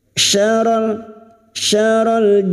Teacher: huruf syin makhrajnya ada pada wastul lisan atau Tengah lidah sama dengan makhrajnya Jim dan ya